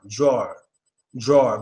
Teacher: it's a deep a sound and when you make that deep a sound automatically in our minds we know is followed by a w because that is the only time we give the a that